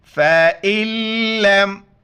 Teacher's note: फ़इल्लम, बीच में नून को नहीं पढ़ेंगे, हमज़ा को डायरेक्ट लाम के साथ मिलाएंगे, नून को नहीं पढ़ेंगे